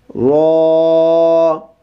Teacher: را، اس کو بھی موٹا کر کے پڑھیں گے۔ را، موٹا پڑھتے ہوئے اس بات کا آپ نے خیال رکھنا ہے کہ کہیں آپ کے ہونٹ گول نہ ہو جائیں۔ بسا اوقات حروف کو موٹا کرتے ہوئے ہونٹ گول ہو جاتے ہیں، ہونٹوں کو گول نہیں ہونے دینا۔